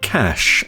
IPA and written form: kæʃ (cash)